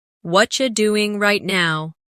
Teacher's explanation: In natural speech, what are you becomes whatcha.